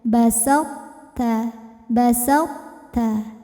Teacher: th yang masuk ke ta tidak langsung ta, melainkan tebalin dulu. Tapi pantulan udah enggak ada. · Karena ada huruf th sukun bertemu dengan huruf ta, maka cara bacanya adalah huruf tho ini dileburkan atau dimasukkan ke ta di ee namun masih meninggalkan sifat dari huruf tho ya, yaitu sifat itbaq atau sifat lengket terhadap langit-langit, lengket lidah terhadap langit-langit atau tebal banget. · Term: idgham mutajanisain, idgham mutajanisain yang naqis